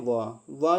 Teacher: व जो होता है वो दंत और ओष्ठ से बोला जाता है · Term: दंतोष्ठ